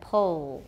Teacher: we've got a lot of tightness in the back of the tongue it's getting close to the soft palate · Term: dark l